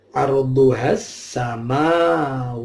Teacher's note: al-ta'rif ketemu sin al-syamsiyah, haknya tidak panjang tapi langsung masuk ke sin yang mati tadi yang tasydid.